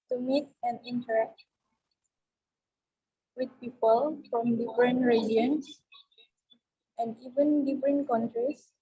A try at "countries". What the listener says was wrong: Countries. Bukan con ya, tapi countries.